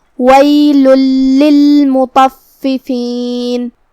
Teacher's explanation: کلمت مطففین میں یہاں حرف الطا ہے. طا حروف التفخیم میں سے ہے، ہمیں اسے بھاری آواز میں منہ پھلا کے ادا کرنا ہے. · طا حروف التفخیم میں سے ہے، ہمیں اسے بھاری آواز میں منہ پھلا کے ادا کرنا ہے. فا پہ تشدید ہے تو 2 حرف کے برابر ہمیں فا کو پڑھنا ہے، کیونکہ تشدید کی اصلیت 2 حرف ہوتی ہے.